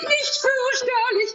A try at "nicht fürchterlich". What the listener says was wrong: No, fürchterlich has no tongue R, please.